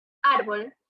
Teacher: Árbol es una palabra grave, ya que su sílaba tónica es la penúltima.